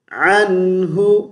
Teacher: نون کو زیادہ لمبا نہیں کھینچیں گے، غنہ بن جائے گا